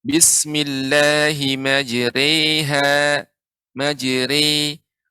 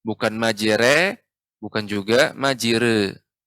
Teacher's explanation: fathah yang dimiringkan ke kasroh dan alif yang dimiringkan ke ya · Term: imalah